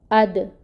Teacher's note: حمزہ محقق ادا کریں گے، شدت سے ادا ہوگا، اس کے اوپر فتح ہے، 1 کاؤنٹ پڑھیں گے، ٹھیک ہے۔